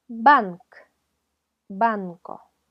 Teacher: es un sonido que se forma con ayuda de ambos labios un golpe de los labios